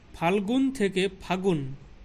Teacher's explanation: ফাল্গুন থেকে ফাগুন, ল বিলুপ্ত। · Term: অন্তর্হতি